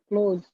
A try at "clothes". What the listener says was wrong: Yeah, work on the O sound. When you read, you pronounce it as it's close to my job.